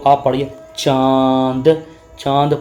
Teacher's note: जब हम ये बोल रहे हैं चांद बिंदी तो नाक से भी हवा निकलती है तो इसे भी हम लोग नासिक या अनुनासिक वर्ण बोलते हैं।